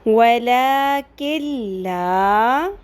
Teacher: وَلَكِنْ لَا، اب آپ کہیں گے نون لکھا ہوا ہے اور میں نے نون بولا نہیں، کاف کی زیر کو ڈائریکٹ لام کے ساتھ میں نے ملا دیا · لام اور را، نون ساکن کے بعد لام آ گیا ہے، لام اور را آ جائے تو نون ساکن کی آواز یا تنوین میں جو نون کی ہمیں آواز آ رہی ہوتی ہے ان ان ان میں، وہ بھی نون ساکن ہی ہوتا ہے بیسیکلی، لیکن ہوتی تنوین ہے، تو وہ آواز جو ہے نون ساکن کی وہ سائلنٹ ہو جاتی ہے، بالکل ختم